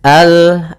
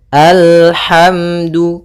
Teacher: ujung lidah naik melekat dengan langit-langit atas, ya, kena al, bukan al tapi al, alhamdu. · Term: makhraj daripada lam